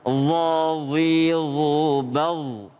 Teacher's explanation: kalau d itu tebal dia ada udara di dalam mulut